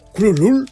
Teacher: pronunciando la primera sílaba de manera muy gutural y densa